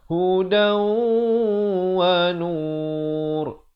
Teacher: Dal tanwin di atas bunyi dan. Tapi bila datang waw kena masuk berserta dengung 2 harakat. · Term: idgham bi gunnah